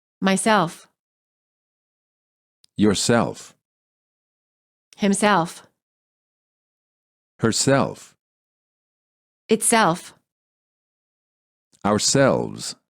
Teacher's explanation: reflexive pronouns stress the last syllable